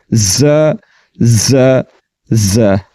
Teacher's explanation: اس کو پڑھیں گے ز زبر ز ز ز، مخرج کے اعتبار سے زبان کی نوک کو ثنایا علیہ اور ثنایا سفلی کے درمیان لگایا اور سیٹی کے ساتھ اس کو پڑھا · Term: صفت صفیر